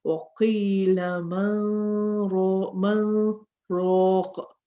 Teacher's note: Now, we should have a merging here. We should say man raq, but in this case, we don't. We stop. We pause a little. · We're going to say man raq and pause slightly